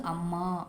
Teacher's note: நெடிலுக்கு 2 மாத்திரை அளவுங்க, குறிலுக்கு 1 மாத்திரை அளவு, மொத்தம் 3 மாத்திரை அளவு நீண்டு ஒழிக்குதுங்க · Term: அளபடை